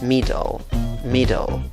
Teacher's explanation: La fuerza de voz va en la primera sílaba, como lo ves en el apóstrofe, contando de izquierda a derecha. · la segunda sílaba tiene una schwa chiquitita que casi ni se nota.